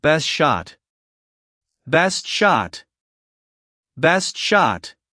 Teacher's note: the T in best is often silent or very light. So it sounds like best shot.